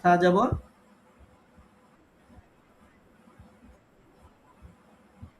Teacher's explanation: জিহ্বার আগা সামনের উপরে ২ দাঁতের আগার সাথে লাগিয়ে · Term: সায়ের মাখরাজ